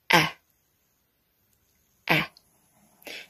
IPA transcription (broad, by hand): æ